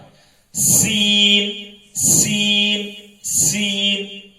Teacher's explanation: سین باریک ہے لیکن اس میں سختی ہوتی ہے یعنی سیٹی کی آواز آتی ہے